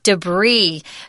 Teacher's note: those French love to not pronounce that last consonant